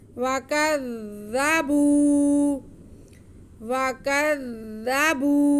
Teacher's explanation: वकज़्ज़बू वकज़्ज़ा वकज़्ज़ा, आगे बा पे पेश और वाव साकिन है तो ये वाव मद्दा हो गया। बा की आवाज़ को हम एक अलिफ के बराबर खींचेंगे। वकज़्ज़बू वकज़्ज़बू वल्लज़ीन कफ़रू वकज़्ज़बू बिआयातिना, जी बा के नीचे ज़ेर, हमज़ा पे खड़ा ज़बर, अलिफ है, अलिफ के ऊपर खड़ा ज़बर तो ये हमज़ा बन गया।